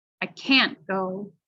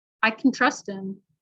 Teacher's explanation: when can is is not emphasized it's not stressed in the sentence we'll actually pronounce it like kin